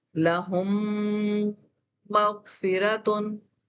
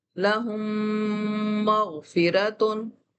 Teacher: लहुम में जब हम गुन्ना करते हैं तो हमारे होंठ मुकम्मल तौर पर मैश होते हैं, अंदर की तरफ दबे हुए होते हैं और हम मीम के गुन्ने को पुल कर रहे होते हैं। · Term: इदगाम शफी